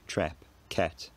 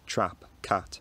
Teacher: Germans approximating the English trap vowel as e trap cat rather than using their own a vowel trap cat which is closer